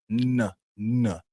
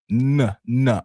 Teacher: Vous constatez une vibration, n'est-ce pas? N. OK, donc c'est vocalisé.